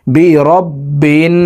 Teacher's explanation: নাকের বাঁশি থেকে তিন সেকেন্ড পরিমাণ গুন্নাহ করে ধরে রাখবো